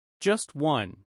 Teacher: The final sound of just may become less noticeable.